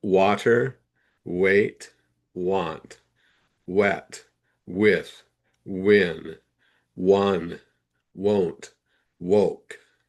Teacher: when it's at the beginning of a word, that's when we have that wah sound, not va